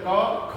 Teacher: तो अगर हम इनका उच्चारण करेंगे तो आप देखेंगे जब भी हम करते होंगे जैसे क ख, तो ख पे वायु अधिक लगती है, ऐसे ग घ पे वायु अधिक लग रही है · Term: महाप्राण